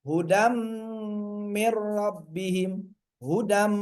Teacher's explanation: Hudam, ini idgham biguna, ya, mewakili idgham. Hudam, tahan dulu sampai berdengung. Dengungnya itu keluar dari rongga hidung.